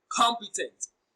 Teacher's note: Com is pronounced louder and longer. The stress falls on the first syllable.